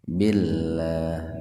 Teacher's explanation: Nama Allah, atau lebih tepatnya, huruf lam yang didahului oleh kasrah. Jadi, nama Allah diucapkan dengan lemah lembut, ya. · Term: tarkik